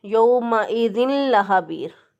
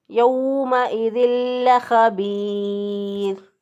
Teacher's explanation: इदगाम करेंगे, नाक में आवाज़ नहीं ठहराएंगे इसकी तनवीन की। तो हम इसको पढ़ेंगे यौमइज़िल लख़बीर। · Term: इदगाम बिला गुन्ना